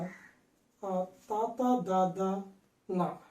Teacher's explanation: వీటిని పలికేటప్పుడు నాలుక పై దంతాలకు టచ్ అవుతుంది. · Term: దంత్యములు